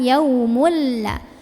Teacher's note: Jadi cukup ditekan yaumulla. Masukkan ke lam langsung tanpa berdengung. Idgham bila gunnah.